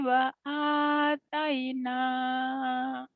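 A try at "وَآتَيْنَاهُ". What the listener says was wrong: Nah, jadi jangan wataina, ada haknya. Wa ataina, ada di ujungnya. Wa ataina, ya, jangan wataina, kan ada hak mati itu.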